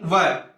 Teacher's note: व का किससे होता है दंतोष्ठ से, दंत और ओष्ठ दोनों को मिला करके।